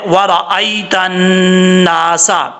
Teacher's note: اس کے بعد ہے ورأیت الناس، واو کو پڑھتے وقت ہونٹ گول کریں گے، را کے اوپر زبر ہے، را پر پڑھا جائے گا، اور حمزہ کے بعد یا ہے، یا ساکن سے پہلے زبر ہے اور یہ یا لین ہے، ورأیت الناس، نون کے اوپر شد ہے، غنہ کیا جائے گا، ایک الف کی مقدار، سین میں سیٹی آئے گی۔